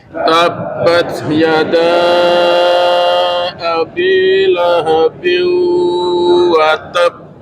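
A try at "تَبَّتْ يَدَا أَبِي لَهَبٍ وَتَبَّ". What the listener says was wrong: Kemudian kita lihat pada akhir ayat itu, pada watab, kita lihat ada tasydid nggak di huruf ba? Ada. Maka ketika tasydid bacanya harus ditasydid. Pertanyaannya gimana cara bacanya? Watab, bukan watab. Kalau watab maka dia nggak ada tasydidnya. Kalau bacanya watab itu sama dengan akhir dari ayat setelah.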